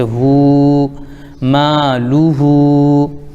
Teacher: ہا پر الٹا پیش ہے واو مدہ کے برابر ایک الف کھینچیں گے